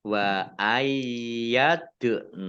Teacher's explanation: bacaan Qalqalah dibaca memantul ditampakkan pantulannya Maria Mal bayi Alif lamnya Alif Lam Qomariah ditandai